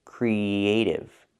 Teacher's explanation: the k sound with no voice, not g, but k, creative. When I link the E sound and the A sound, creative, I use the Y sound in the middle, Y like in yellow and yesterday.